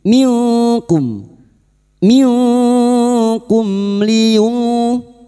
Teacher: Berikutnya mim sukun, karena sekarang kita wasal di sini mim sukun bertemu lam idhar syafawi. Mim sukun dibaca jelas tanpa mendengung.